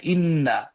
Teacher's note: তাসদীদ ওয়ালা হরফ দুইবার উচ্চারিত হয়, এটাই বুঝিয়েছে।